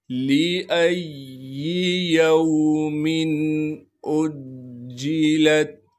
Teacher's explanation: لِأَيِّ يَوْمٍ أُجِّلَتْ، حمزہ کو جیم سے ملائیں گے، جیم پر تشدید ہونے کی وجہ سے تھوڑا سا ٹھہراؤ رکھیں گے، لام کو آگے تا ساکن سے ملا دیں گے۔